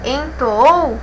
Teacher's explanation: Entoou temos aí como a última sílaba a mais forte. E se a última sílaba é a mais forte, ela é oxítona, não vai receber acento porque termina aí em OU.